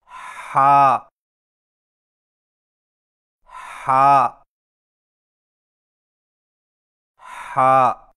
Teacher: اور ہا کی آواز حلق سے رگڑ کھاتی نکلتی ہے